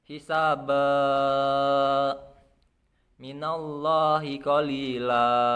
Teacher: Cara membacanya itu dengan menghilangkan tanwin dan menjadi huruf asli. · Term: mat iwat